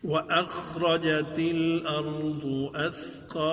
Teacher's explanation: وأخرجت الأرض أثقالها وأخرج نہیں پڑھنا ہے وأخرجت الأرض وأخرج خا کو پھر موٹا کر کے پڑھیں گے تفخیم کے ساتھ پڑھیں گے